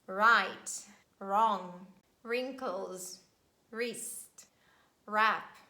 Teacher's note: at the beginning of words we pronounce only r sound